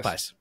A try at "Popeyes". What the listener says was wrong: feel like you are adding an H after the second P